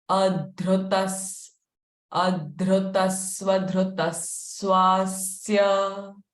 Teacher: Both visarga sound will be sa.